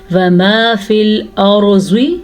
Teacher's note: را کو اس لیے پر پڑھیں گے کیونکہ را ساکن سے پہلے زبر ہے